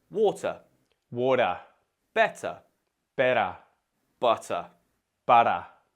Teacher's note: Australians usually, well, they tend to flap their T's. This is also known as the voiced alveolar flap, if you want a fancy term.